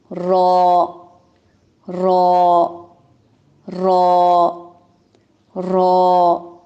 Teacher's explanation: را کا جو مخرج ہے اس میں ہلکی سی تکرار بھی ہے. یہ والی ساؤنڈ ہے، تقریر ہے.